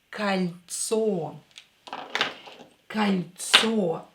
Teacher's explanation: This O will be pronounced as A because it's not stressed. So it will be кольцо.